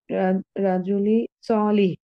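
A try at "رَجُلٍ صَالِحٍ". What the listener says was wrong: প্রত্যেকটা শব্দের শেষের যে হরকত, এটাকে বলে ইআরাব। এই ইআরাবটা আপনি স্পষ্ট করে দিয়ে আবার পড়েন।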